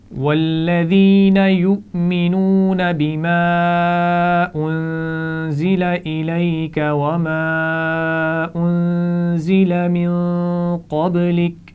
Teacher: من قبلک تو اس نون پر بھی غنہ ہوگا